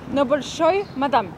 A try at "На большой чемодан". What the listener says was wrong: Чемодан. Not мадам. Мадемуазель. На большой чемодан.